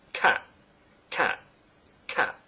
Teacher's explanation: This is a t sound, not a glottal stop. Many people say cat with a glottal stop. Cat with a glottal stop sounds like this.